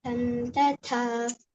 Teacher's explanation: Ta is alpa prana, low pressure. Ha is a mahaprana.